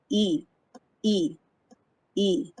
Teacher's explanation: your tongue is close to the top and the front of your mouth